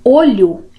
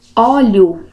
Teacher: com essa pronúncia aberta óleo em vez de olho eu tenho outra palavra